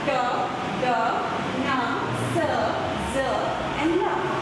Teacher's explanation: Hence, alveolar. The tip or blade of the tongue is the active articulator and the teeth ridge is the passive articulator.